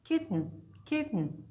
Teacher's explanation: sometimes it is a glottal stop like in mitten